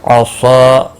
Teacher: صاد مستعلیہ ہے، پر پڑھا جائے گا، الف مدہ بھی ہے، ایک الف کے برابر کھینچ کر پڑھیں گے